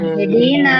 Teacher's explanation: Pasti mengalir. Kenapa? Karena pita suaranya terbuka. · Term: huruf ha ketika sukun